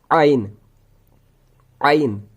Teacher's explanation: हलक का दरमियानी हिस्सा। सेम जैसे हा का है वही आइन का भी है। जहां से हा अदा हो जाता है वहीं से आइन भी अदा हो जाता है।